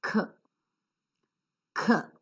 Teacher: Now, when we come down to allophones, say for example, C-A-K-E, cake. A native speaker pronounces the initial sound k with a slight h sound. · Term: aspiration